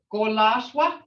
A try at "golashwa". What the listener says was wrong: Well, you're giving it a K sound. Okay, I've always heard more of a D sound, like dolashwa. Dolashwa. Okay, so it is golashwa. Golashwa.